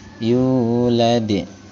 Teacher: sukunnya berada di akhir bacaan dan dipantulkan dengan pantulan yang sedikit keras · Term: qalqalah kubra